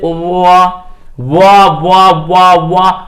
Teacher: ओष्ठ से और दंत दोनों की मदद से व का उच्चारण हुआ, अर्थात इसे दंत ओष्ठय वर्ण कहती हैं।